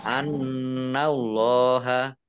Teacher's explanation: nun tasdid dibaca gunnah atau mendengung, ditahan 2 harokat. Allahnya dibaca tebal karena harokat di depannya fathah.